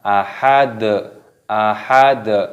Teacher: Kufuwan ahad, ahad, dalnya berharokat dhammah, ketika tanda waqaf maka dimatikan dan dipantulkan, dikolkolah suaranya, hurufnya dikolkolah.